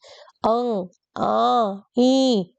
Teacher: अब दूसरा है इसका अनुनासिकता के आधार पर, यानी कि जिन स्वरों के उच्चारण करते समय जो हवा है वो हमारी नाक से भी निकले, दैट इज कॉल्ड अनुनासिकता के आधार पर बटे हुए शब्द। अंग, आ, ई, इन सब का जब मैंने उच्चारण किया तो मेरी जो हवा है ये नाक से भी निकली है।